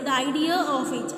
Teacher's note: R is inserted and that is intrusive R